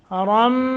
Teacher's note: نون تنوین کے بعد میم مشدد ہے، یہاں غنہ ہوگا،